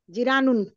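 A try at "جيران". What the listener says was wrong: জি টান হবে, জিরানুন, তাই না?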